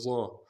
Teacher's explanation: ضا کو موٹا کریں گے، ضاد کے مخرج سے ادا نہیں کریں گے، ضا. أظلم جیسے طا پڑھتے ہیں اس کو موٹا کریں گے ضا کو.